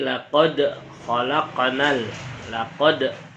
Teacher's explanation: dal sukun, hukumnya qalqalah, wajib bacanya dipantulkan